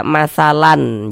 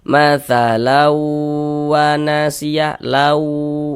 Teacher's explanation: Jadi di bagian launya itu suaranya itu kita tahan, kita panjangkan sejenak ya. Nah, kira-kira sepanjang 2 harokat. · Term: idgham bi gunnah